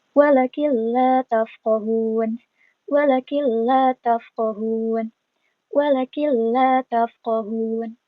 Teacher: Jadi, lebur ya, dimasukkan ke dalam huruf lam. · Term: idgham bila guna